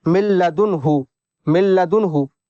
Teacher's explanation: نون ساکن کے بعد میں لام آیا حروف یرملون میں سے، تو یہاں پر بھی ادغام تو ہوگا، میم کو ڈائریکٹ لام میں ملائیں گے، نون کو سائلنٹ کر دیں گے، اس کی آواز ساؤنڈ بالکل بھی نہیں آئے گی